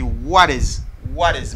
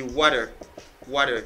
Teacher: Il écrit avec yon T qui bam yon D rapide. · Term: flat D